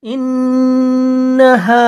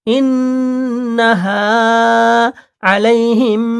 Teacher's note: ইন এক আলিফ গুণা হবে, হা এক আলিফ টান হবে